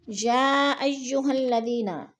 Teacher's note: یا پہ جو ہے مد متصل ہے، 4 الفی مد ہے، ہم نے اس کو 4 الف کے برابر کھینچ کر پڑھنا ہے۔ الذین، ذی پہ یا مدہ ہے، یا مدہ کو بھی ہم نے 1 الف 2 حرکات کے برابر لمبا کر کے پڑھنا ہے۔